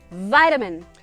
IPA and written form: vaɪtəmən (vitamin)